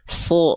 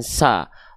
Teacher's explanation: Bang, emang kalau misalnya dia termasuk ke dalam huruf yang karakter pelafalannya adalah tebal, huruf tebal itu ketika dia berharakat fathah, dia tidak akan terdengar seperti vokal a, teman-teman ya. Tapi huruf tebal itu ketika fathah dia akan condong seperti bunyi vokal o ya. Condong seperti ya bukan betul-betul bunyi vokal o yang kita sengajakan.